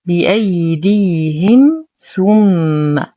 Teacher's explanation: لدينا ميم ساكنة وبعدها حرف الثاء، الحكم إظهار شفوي مع غنة ناقصة